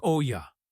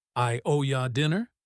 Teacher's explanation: Listen to how owe you links. It sounds like oh ya.